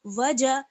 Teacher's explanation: جیم کا مخرج جو ہے وہ ہے زبان کا بیچ والا حصہ اور اس کے مقابل اوپر کا تالو